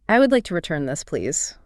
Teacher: Your voice goes slightly down at the end to show that the decision has already been made in your mind.